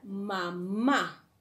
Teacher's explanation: tenemos aquí que la segunda sílaba la sílaba tónica